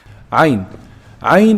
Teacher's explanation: Arabic is famous for its throat sounds, which can be particularly challenging for English speakers. عين Ayn is pronounced from the middle of the throat.